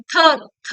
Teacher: ಅಂದ್ರೆ ಇವು ಹುಟ್ಟೋದು ಎಲ್ಲಿ? ಹಲ್ಲುಗಳ ಬಳಿ ಹುಟ್ಟುತ್ತವೆ. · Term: ದಂತ್ಯಾಕ್ಷರಗಳು